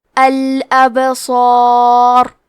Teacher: مد الف میں پیچھے والے حرف کا حکم لیتے ہیں تفخیم میں اور ترقیق میں، تو کیونکہ اس کے پہلے حرف الصاد حروف تفخیم میں سے ہے تو ہمیں صاد کو اور مد الف کو دونوں کو بھاری آواز میں پڑھنا ہے